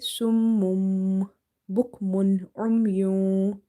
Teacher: If you see letter ba, so you replace the sound of such noon sakin and tanween with meme, okay, by doing nasalization or gunna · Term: iklab